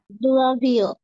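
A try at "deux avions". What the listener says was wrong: না, দাভিও একসাথে। দো থাকলে এরকম আলাদা থাকতো, হ্যাঁ, দো প্লাস আভিয়ন। হ্যাঁ, দাভিয়ন।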